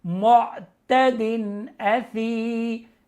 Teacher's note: اب یہاں پہ غنہ نہیں ہوگا کیونکہ آگے حروف حلقی میں سے حمزہ ہے